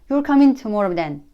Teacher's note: I put the down tone in last two words. That's because I'm just confirming the answer.